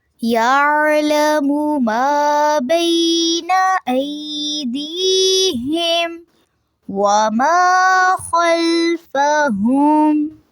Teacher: یہاں پہ بھی جو ما کا لفظ ہے وہ منہ سے ادا کرنا ہے، ناک میں آواز نہیں لے کے جانی